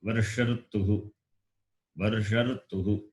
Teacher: Varsha plus Rituhu. A plus R will be replaced by Ar. Guna Sandhi.